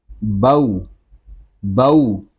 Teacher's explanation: بغیر کھینچے بغیر جھٹکا دیے نرمی کے ساتھ معروف پڑھنا ہے ہم نے۔ بو بو، واو پہ آپ کے ہونٹ گول ہونے چاہیے۔